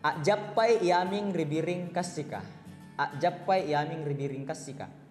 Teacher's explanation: Yang pertama disebut sebagai A stop, kedengaran seperti ada glottal stop, tanda petik itu.